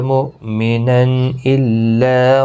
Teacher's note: تنوین کے بعد حمزہ آیا ہے تو یہاں پر اظہار حلقی ہوگا، گنہ نہیں ہوگا